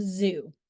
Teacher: AER Ridge to create a narrow passage for airf flow however in this case the vocal chords vibrate adding voicing to the sound · Consonant Z is a voiced alveolar fricative. The production of the Z sound is similar to S, with the tongue positioned close to the alveolar ridge to create a narrow passage for airflow.